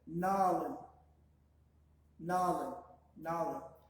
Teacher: You kind of drag out the middle A's a little bit.